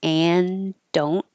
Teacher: The connections and don't, you'll just hear one D.